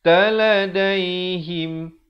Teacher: Taladaihim, izhar syafawi, bunyi saja him, jangan panjang, terus masuk.